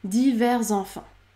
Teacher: je débute par la consonne sonore Z Z Z enfants divers enfants c'est la même chose lorsqu'on